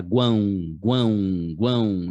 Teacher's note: Aí você não fala gan, né? Você fala guão, guão, guão. Então o U é pronunciado. O A vai ter um tio em cima e depois vai vir um som de O no final.